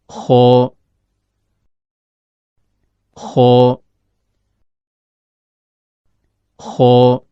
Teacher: Huruf kho keluar dari ujung tenggorokan, yaitu berada antara langit-langit atas bagian belakang dengan akar lidah.